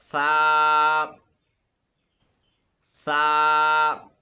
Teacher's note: سا کو پڑھتے وقت اپنی زبان کو اوپر والے دانتوں کے نیچے رکھنا ہے، پھر پڑھنا ہے، اور اس میں سیٹی کی آواز بالکل نہیں آنی چاہیے۔ سا، زبان کو اوپر والے دانتوں کے نیچے رکھ کے پڑھیں۔